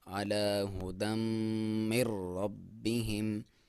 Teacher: علی ہدم من ربہم، اور یہاں پہ را کے ساتھ ادغام ہے، اور را کے ساتھ جب میم کا ادغام ہے وہ بغیر غنہ کے ساتھ ہے، یہاں پہ نون کو آپ نہیں پڑھیں گے۔ · دال کے اوپر 2 زبر ہیں جسے تنوین بولا جاتا ہے، اور اس کا ادغام ہے میم کے ساتھ، اور ادغام ما غنہ یعنی غنہ کے ساتھ